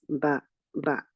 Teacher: the back of the tongue in ba is not raised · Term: thin letter